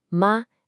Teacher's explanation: O primeiro tom, ma, é alto e plano. A voz segue reta.